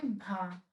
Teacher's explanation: घोष महाप्राण और ओष्ठ्य, ये तीनों ही है